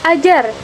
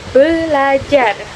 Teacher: Umpamanya dalam proses prefiksasi berpada kata ajar dalam proses prefiksasi atau ber pada kata ajar bunyi r pada prefix berubah menjadi bunyi l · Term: perubahan ponem